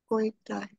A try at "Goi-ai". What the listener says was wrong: Like three separate words. Goi-ai. Goi-ai. Goi-ai. Yes.